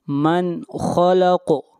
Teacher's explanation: الا یعلم من خلق، من یہاں پر نون ساکن کے بعد اگلا حرف خا ہے اور خا حروف حلقی میں سے ہے، اس لیے یہاں پر اظہار کریں گے، نون کو ظاہر کر کے پڑھیں گے۔ من خلق، خا اور قاف کو موٹا پڑھیں گے اور قاف کے اوپر قلقلہ ہوگا، آواز کو ہلائیں گے۔